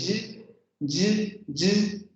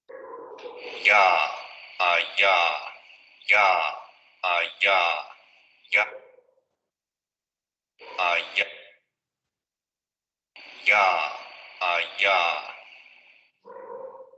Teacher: no hay bloqueo y prácticamente el aire está saliendo sin dificultad, por eso también se acerca mucho a una vocal. Y las cuerdas están vibrando, aquí no se ve, pero ahorita en el gráfico lo veremos.